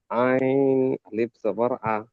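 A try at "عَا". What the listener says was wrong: আ, এক আলিফ টান দিতে হবে, এটা তো আলিফ মাদ্দা। আ, আ বলে টান দেন, আ। আ বলে ছেড়ে দিচ্ছেন কেন? আইন আলিফ জাবার আ বলে টান দিতে হবে।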